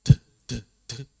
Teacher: membaca dengan hembusan udara yang deras